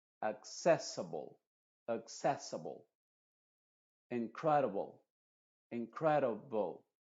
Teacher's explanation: en palabras terminadas en ible la i es pronunciada como una shua y la e también se está pronunciando como shua solamente que esta e está pronunciándose entre las dos consonantes la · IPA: /ə/